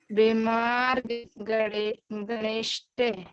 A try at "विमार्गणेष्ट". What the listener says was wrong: नहीं विमार्ग तक वो बोल दिया अपन ने, अब ये इतना सा बच्चा है, णेष्ट, णेष्ट, विमार्गणिष्ट,